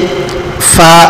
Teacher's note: مخرج نمبر 15 اوپر والے 2 دانتوں کا سرا اور نیچے کے ہونٹ کا اندرونی حصہ، اس سے فا ادا ہوتا ہے۔ حروف شفویہ میں سے ایک حرف فا ہے۔